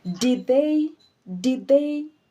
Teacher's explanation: if what is following the D is a consonant then you swallow the first D